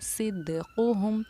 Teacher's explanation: جو ہمارا حق، پیچھے ہم آپ کو پڑھا چکے، جو حق کے قاعدے پر، حق اور غیوب کے قاعدے پر ہماری قاف اور با کی آواز لوٹتی ہے، سیم وہی آواز جب ہم صدقہم کہتے ہیں تو صدقہم کی دال ساکن پر ہماری آواز لوٹے گی، کیونکہ دال ساکن بھی ہمارا حروف قلقلہ میں سے ہے، قاف تو با جیم اور دال، اس لیے ہم نے اس کو پڑھا صدقہم.